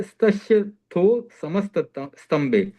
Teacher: स, त और स इन तीनों के ऊपर हल्का ही रखना है, अंत में य पर जोर दिया तो चलेगा